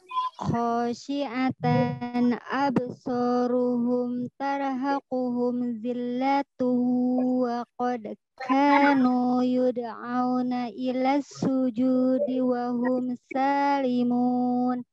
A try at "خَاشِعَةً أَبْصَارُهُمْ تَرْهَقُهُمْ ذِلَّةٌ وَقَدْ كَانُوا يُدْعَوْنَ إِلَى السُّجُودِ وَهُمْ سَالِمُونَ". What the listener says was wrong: Bagus, tapi ra'nya kurang tebal. Tar dengan tarhaquhum tar. Sebagai nah itu yang tar.